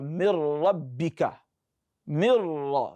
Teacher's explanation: But as for kamil, a complete immersion, complete insertion of the nun sākinah into the next letter. No properties of the nun will be left. And it is when you have lam or ra immediately after nun sākinah that you apply that.